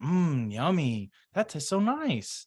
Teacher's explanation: I'm slowing down I'm elongating my vowels